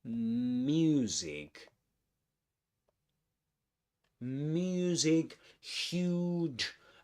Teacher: the narrator emphasizes the oo in this word, the long oo, which is the same we find in the word music.